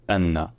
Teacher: un coup de glotte pardon puis un N qui est dédoublé un N qui est long